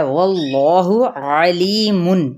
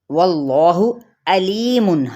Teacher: اور اگر کوئی انہی الفاظ کو یعنی قرآنی کلمات کو واللہ علیم حمزہ کے ساتھ پڑھ دے، عین کی بجائے حمزہ کے ساتھ پڑھ دے